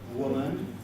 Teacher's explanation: Notice that I have got a vowel schwa in the second syllable. Woman, not a syllabic name.